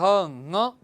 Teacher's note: कंठ के अतिरिक्त इसका एक उच्चारण स्थान नासिका भी होती है